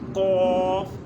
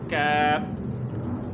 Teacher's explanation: قاف کو پر پڑھا جاتا ہے یعنی موٹا پڑھا جاتا ہے، اور کاف کو باریک پڑھا جاتا ہے